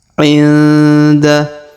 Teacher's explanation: Huruf nun sukun bertemu da, maka didengungkan dan disamarkan.